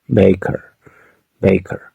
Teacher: En inglés americano, es como una schwa acompañada de una R.